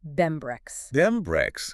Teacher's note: The and turns into an N. The N assimilates into an M because of the B in breakfast. It erodess all the way down to be brem.